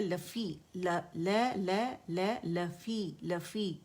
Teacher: और ये या की जो आवाज़ है लफ़ी, लफ़ी लफ़ी, ठीक है, मद तबीई 2 काउंट आवाज़ नीचे जाएगी, लोअर जो नीचे ड्रॉप हो जाएगा